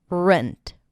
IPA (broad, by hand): rənt